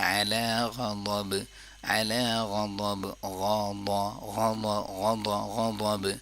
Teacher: غین اور ضاد کو پر پڑھ لیا